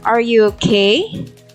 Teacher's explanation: the underlined word okay is in the rising intonation